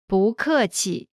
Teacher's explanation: and adjectives pronunciation note when is followed by a fourth tone its tone changes from the fourth tone to the second tone